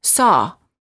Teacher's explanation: the lips are apart and very slightly rounded and they're oval in shape and the tongue is slightly tense and it's down near the